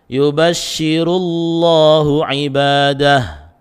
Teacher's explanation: Contoh yang terakhir didahului dhamma di atas ra itu, maka lam jalalanya dibaca tebal